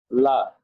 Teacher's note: জি, আমার সাথে বলি লা। লা না, আওয়াজ মোটা হবে না, এক্ষেত্রে একেবারে স্বাভাবিক লা। লা হ্যাঁ, লা লা বলেন লা লি লু।